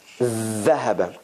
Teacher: the tongue is all the way out and under the teeth